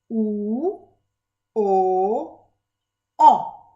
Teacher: My tongue is moving from U, O, O. It's going down. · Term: back vowels